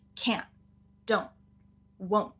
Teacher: So it's kind of this weird sound that we don't really have in any other place, where we have this N and it's kind of getting pushed up more into the nose and stopped early. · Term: stop T